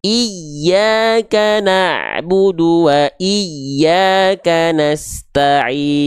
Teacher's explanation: ya oke jelas teman-teman sampai sini ah naber ya dinaber Jadi huruf ya ketika bertasydid dia dibaca dengan naber nabrah penekanan yang lebih kuat